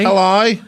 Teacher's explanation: it helps if you go really far down and then very, very, very high up.